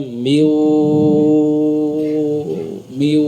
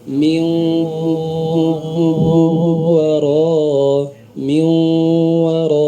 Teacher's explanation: sering terbaca dengan tidak melibatkan rongga hidung contohnya Min Waro terbaca Mi Mi harusnya masuk ya Min War